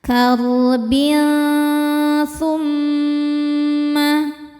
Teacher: Selanjutnya ada hukum ikhfa hakiki ausat karena ada tanwin kasrah menghadapi huruf tsa. Cara bacanya tanwin ini bunyinya samar-samar ya. Siap-siap menuju tsa kemudian dengungkan. Nah, dengung dan kesamarannya sama besar karena tsa ini makhrajnya tidak terlalu dekat juga tidak terlalu jauh dari nun.